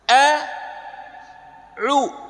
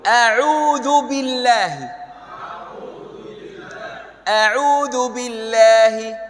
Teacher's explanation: Huruf hamzah pisah dengan huruf ain.